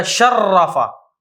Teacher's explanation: ہم جو درمیان والا را ہے اس کو شد دے دیں گے، بن جائے گا شرفہ · لیکن جہاں پہ بھی شد ہوتی ہے وہاں پہ دو حرف ہوتے ہیں. شارفہ میں را فقط ایک ہے، لیکن جب شرفہ پڑھا تو اس میں دو را ہو جائیں گی